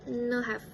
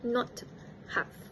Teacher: the t sound in the word not may have been elided, making it no have instead of not have. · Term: elision of t sound